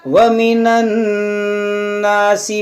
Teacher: नून मुशद्दद है और इसके साथ में जो अलिफ है ये अलिफ मद्दा है, इसमें गुन्ना करेंगे, इसको खींचेंगे